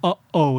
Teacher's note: that is a glottal stop. Basically, like you hear in uh-oh, that little stop in the middle, so you would say Hawaii, and the W is pronounced like a V.